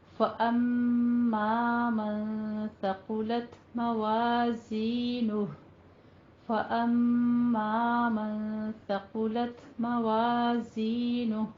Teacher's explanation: میم کے بعد منہ کھول کر پورا الف ادا کرنا ہے